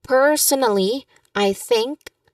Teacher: So the emphasis here is on per first syllable of personally and the word think. · And again be reminded the stress is on think.